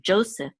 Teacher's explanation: Unlike in English, the accent is on the first syllable, Joseph.